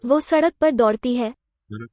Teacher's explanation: It's a little v. We don't hear an H coda. It's not vaha.